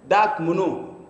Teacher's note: يعني يجعل الذال دالا